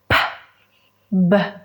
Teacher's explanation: son consonantes que se producen con los dos labios y que son producidos con una oclusión. La lengua no hace nada. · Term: oral stop